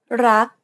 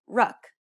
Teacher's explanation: Do you notice how air in the final K sound is not expelled? This is true for all final consonants in Thai words.